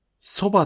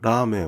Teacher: The beginning pitch of soba'' and ramen'' does not drop.